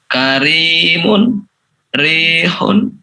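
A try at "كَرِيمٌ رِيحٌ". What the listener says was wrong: Di ro-nya itu tipis ya, tidak karimun tapi karimun. Jadi posisi suara kita juga ke bawah ya. Posisi suara kita juga ke bawah. Karimun, rihun ya, seperti itu. Yang pertama yaitu ro dalam keadaan ataupun dia ketika berharokat kasroh.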